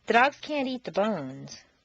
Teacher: make the negative can't sound very short and stress both can't and the verb